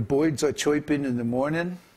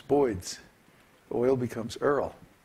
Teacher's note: the slang is to exchange the two diphthongs error and oy so the boyds are choiping in the morning